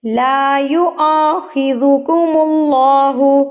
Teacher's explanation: لا یؤاخذکم اللہ، اللہ سے پہلے پیش، تو اللہ سے پہلے اگر پیش آ جائے تو اللہ کو موٹا یعنی کہ پر پڑھا جاتا ہے